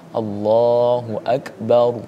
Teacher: Jangan dibaca tipis ra-nya, karena ra-nya harus dibaca tebal didahului oleh huruf yang berharokat fathah. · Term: Ra yang dibaca tebal